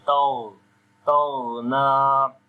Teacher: On the ghain we read again heavy sound, and also we make a rakhawa quality, like continuation of sound.